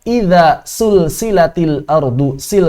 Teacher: ketika sifat jaharnya hilang otomatis berubah jadi Sin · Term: sifat jahr